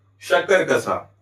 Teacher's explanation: शक्कर का सा उच्चारण स्थान तालु, इसलिए इसका वर्ग हो जाएगा तालव्य।